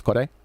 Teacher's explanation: They do their R's in a way that's like somewhere in between a D and an R.